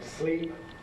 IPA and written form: sliːp (sleep)